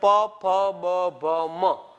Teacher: અને પ ફ બ ભ મ, તમારા બંને હોઠ ભેગા થાય તો જ તે બોલી શકાય છે